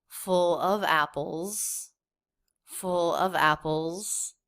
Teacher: she's over pronouncing a little bit the word of is more clear I think than it would normally be in casual conversation